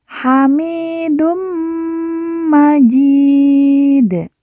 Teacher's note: Dun bertemu dengan huruf mim yang bertasydid, maka dun dileburkan langsung masuk ke huruf mim, lalu kita tekan, kita tahan 2 harokat dan didengungkan.